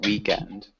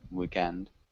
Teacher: So we do emphasize the first syllable. So it sounds more like weekend than weekend.